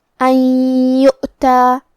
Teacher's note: کلمت یؤتا میں یہاں واو پہ حمزہ ہے تو ہم حمزہ کو ظاہر کریں گے. حمزہ کی ادائیگی حلق کے نیچے والے حصے سے ہے · کلمت ان کے آخری میں نون ساکن ہے، پھر حرف الیا ہے. کلمت یؤتا یہاں حکم ہے ادغام، تو ہم یہ حکم کو غنہ اور تشدید کے ساتھ ادا کریں گے